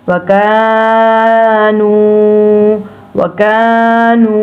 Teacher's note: ये दोनों हरूफ मद्दलीन हैं, इन दोनों हरूफ को हम लंबा करेंगे।